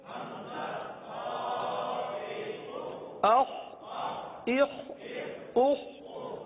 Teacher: اب یہ بھی حلق سے ادا ہونے والا حرف ہے, اور حلق کے اوپر والے حصے سے ادا ہوتا ہے, لہذا خا کو حلق سے ادا کریں گے, اور یہ حرف پر ادا ہوتا ہے, لہذا پر ادا کریں گے.